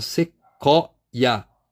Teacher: eu não teria um tritongo aqui, porque eu não pronuncio esse U depois do Q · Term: falso tritongo